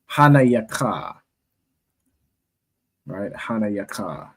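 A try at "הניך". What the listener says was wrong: There's another ha at the end. Hanayaka.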